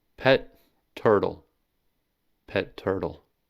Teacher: In the phrase pet turtle, the ta is stopped, held for extra time, and then released. This method of stop, hold, release signals the pronunciation of both sounds.